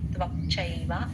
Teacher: త్వక్ క ని సగం చెప్పి చ కి ఎక్కువ ఇస్తే చై